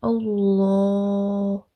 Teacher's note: Instead of Allah, it's going to be Allah, thick tone, and then stretch up to 2.